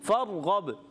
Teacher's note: فرغب، را کو پر رکھنا ہے، را ساکن سے پہلے زبر آ رہا ہے، را کو پر ادا کریں گے، جب کبھی را ساکن سے پہلے زبر آ جائے را پر ادا ہوتا ہے، ٹھیک ہے۔